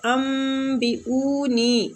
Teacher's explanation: اقلاب کا معنی ہوتا ہے بدلنا، جیسے کہ ہم نون ساکنہ کے بعد با آ رہی ہے تو نون ساکنہ کو ہم میم کے ساتھ تبدیل کر کے پڑھ رہے ہیں، ٹھیک ہے، ورنہ تو ہم نے پڑھنا تھا انبئونی، لیکن ادھر ہم اقلاب کے ساتھ پڑھیں گے۔